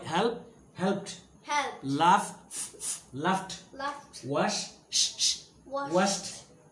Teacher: the ed ending is pronounced as ta after all voiceless sounds